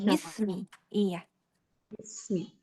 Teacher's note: Hati-hati tidak imalah pada binnya. Tidak besme ya.